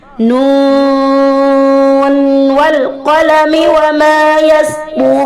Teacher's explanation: Huruf nun di situ ketika bertemu dengan wawu tetap terbaca secara izhar. Inilah yang dikatakan dengan izhar riwayah, izhar yang sesuai dengan periwayatan, sesuai dengan riwayat Hafs.